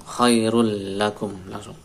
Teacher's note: Khairul lakum, tanwin ketemu lam idgham bila gunah, masuk lam tanpa dengung